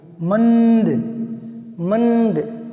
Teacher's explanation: आप मैं को और दे को मत देखिए, इसकी जो ध्वनि है अनुस्वार की, उस पर ध्यान दीजिए। मंद, मंद, न की ध्वनि नासिका से आती है